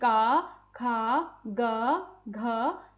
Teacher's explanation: ये ध्वनियां बोलते समय सबसे ज्यादा मेरा गला सक्रिय है। तो ये मेरे कंठ व्यंजन हो जाते हैं। · तो सबसे पहले हमारे होते हैं कंठ्य व्यंजन। जो ध्वनियां हमारे गले से निकलती हैं, यह कंठ व्यंजन कहलाते हैं। जैसे कि क, ख, ग, घ ये ध्वनियां बोलते समय सबसे ज्यादा मेरा गला सक्रिय है।